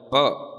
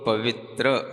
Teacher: अगर आपको प बोलना है प तो आपको अपने दोनों ओठ दबाने पड़ेंगे। हम बिना ओठ दबाए आप प नहीं बोल सकते हो।